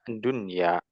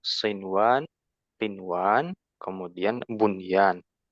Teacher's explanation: Secara kaidah harusnya kita membacanya idgham, idgham bi gunnah. Namun karena terletak pada satu kata ya nun mati dan ya-nya, maka tidak dibaca idgham, ya. Dibacanya dunya. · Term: izhar mutlak